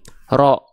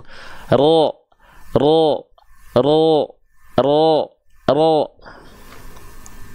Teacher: Sekarang kita coba angkat pangkal lidah kita menjadi yang asalnya ra menjadi ro, ro, ro, ro, tanpa monyong. Vokal terdengar vokal O-nya tanpa monyong.